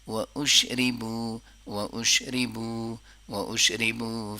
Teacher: ری کو نہیں لمبا کریں گے، بو کو لمبا کریں گے